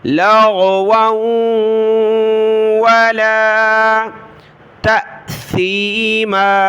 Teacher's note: واو کو واو کے ساتھ ملا ہے، ناک میں آواز پیدا ہوگی